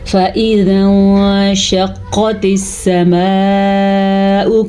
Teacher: सबसे पहले फ़ा को लंबा नहीं करना, हमज़ा को लंबा नहीं करना, क्योंकि फ़ा पे ज़बर है और अलिफ के नीचे ज़ेर है।